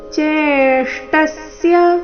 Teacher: ಚೇ ದೀರ್ಘ ಬಂದು ನಂತರ ಆಘಾತ